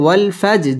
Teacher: জিম কলকলার হরফ ধাক্কা দিয়ে পড়তে হবে